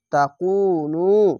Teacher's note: পেশের পরে ও সাকিন এক আলিফ টেনে পড়বেন